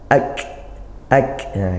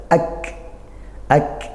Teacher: tadi suaranya juga ngalir nafasnya juga ngalir Sedangkan untuk Kaf ya Suaranya yang tertahan ditekan baru nafasnya yang ngalir